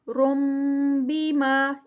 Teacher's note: اقلاب آ رہا ہے یہاں پر کیونکہ یہاں پر تنوین تھی